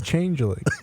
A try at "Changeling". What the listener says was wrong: you're saying Changeling. You're adding a change. Like a UH in there.